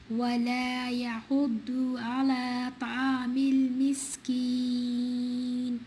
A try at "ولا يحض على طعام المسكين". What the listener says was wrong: The ضاد need to be ضاد, not the not يحض. It's يحض على طا. طعام المسكين. So the heaviness of ضاد and طا.